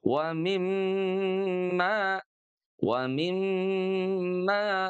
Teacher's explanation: huruf mim bertanda sukunya inilah yang kemudian kita baca selama dua ketuk atau dua harakat ya